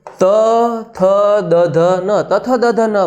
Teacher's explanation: આ 5 વ્યંજન આપણે બોલીએ ત્યારે આપણી જીહવા એટલે આપણી જીભ ઉપરના દાંતને સ્પર્શ કરે છે મિત્રો, તો એને દંત્ય વ્યંજન કહેવાય છે.